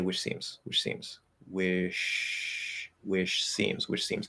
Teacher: CH starts in T, but it ends in SH. So if you're speaking quickly enough, if I say which seems, wish seems, what I'm really saying is this.